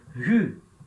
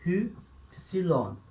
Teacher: agora eu tenho espírito forte, então eu leio aspirado, como se tivesse um R aqui, ou um H, enfim, depende da tua referência, mas eu leio Hu, tá?